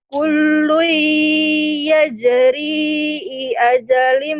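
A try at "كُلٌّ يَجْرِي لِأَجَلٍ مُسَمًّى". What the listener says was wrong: I ajalin. Li'a bukan i ajalin. Li'a. kullu yajri li ajalim musamma.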